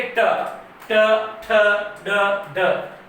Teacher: जीभ क्या होगी? थोड़ी सी उल्टी होगी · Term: मूर्धन्य